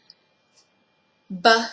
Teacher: it is a bilabial stop and it is voiced so because it's voice the vocal folds will begin vibrating sending